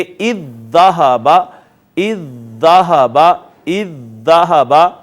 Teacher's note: پہلی دال کو ہم نے دوسری میں ضم کر دیا تو یہاں پہ آ گئی شد، لہٰذا اب اس کو اذ ذہب کی بجائے ہم پڑھیں گے اذ ذہب، اذ ذہب، اذ ذہب۔ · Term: ادغام متماثلین